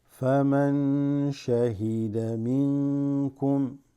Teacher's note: فمن شهد منكم. So فمن, noon sakina followed by sheen, right, makes that ikhfa